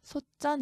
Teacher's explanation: 티읕은 대표음 디귿이죠. 받침 디귿 뒤에 지읒 된소리 적용해서 솥전 이렇게 말합니다.